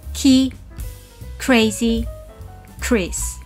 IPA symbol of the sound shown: k